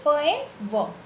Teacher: लेबोडेंटल्स जिसमें क्या होता है lower lip एंड upper teeth, lower lip जो लोअर लिप होते हैं और ऊपर के जो टीथ होते हैं वो मैच होते हैं, है ना।